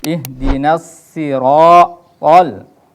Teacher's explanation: To-nya juga harus dibaca tebal karena to ini huruf isti'la.